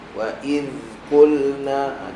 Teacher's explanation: zal mati ada rakhawah, lirik kan bunyi dia.